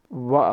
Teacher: دونوں ہونٹوں کو گول کر کے چھوڑ دینے سے وا ادا ہوگا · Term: واو کا مخرج